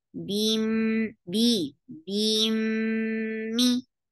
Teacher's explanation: Then attach with meme. This is idgham with gunna. So keep the sound in your nose for a longer time.